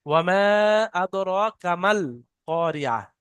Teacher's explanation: লামের উপরে সাকিন আসার কারণে মিমটা গিয়ে ডাইরেক্ট লামের সাথে মিলা হবে।